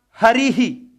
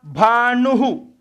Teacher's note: जबकि विसर्ग तो एक ही था। एक जगह है की ध्वनि आ रही है, एक जगह ही की ध्वनि आ रही है, एक जगह हु की ध्वनि आ रही है।